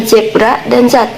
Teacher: Konsonan Z diucapkan seperti suara Z yang bergetar, mirip dengan suara lebah. Yang pertama, tips pertama itu cara pelafalannya itu adalah letakkan ujung lidah dekat dengan gigi depan atas.